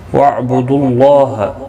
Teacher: اللہ کا لام اس پیش کی وجہ سے پر پڑا جائے گا. اس کے اوپر کھڑی زبر بھی ہے، ایک الف کی مقدار کے برابر کھینچ کر بھی پڑھیں گے.